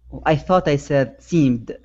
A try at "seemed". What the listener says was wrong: Yeah, you had an E come out right after that M. Seemed. Okay, so it's seemed.